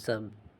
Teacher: Sub word for all here, sub, which is written sabah, sabah, but it's not read as sabah. It's read, the last letter ba loses its a sound, so it becomes sub.